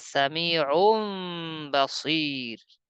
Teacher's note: এভাবে নুন সাকিন ও তানভিনের পর যদি বা আসে, ওই নটাকে ম বানিয়ে পড়তে হয়।